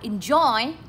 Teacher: Enjoy lên giọng ở âm số 2